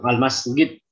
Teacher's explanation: sebagian Arab itu kalau ngucapin jim itu jadi g